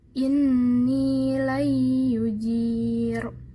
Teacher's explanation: Jadi pada Al-Jin ayat 22 ini terdapat huruf idgham bi gunnah yang ya, sehingga ya-nya dibaca dengung